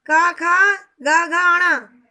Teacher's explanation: ये सब कंठय वर्ण है क्योंकि इनका उच्चारण कंठ स्थान से होता है।